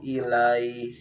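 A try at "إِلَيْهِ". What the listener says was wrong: Panjangin. Ilaih 6 harkat 4 arid.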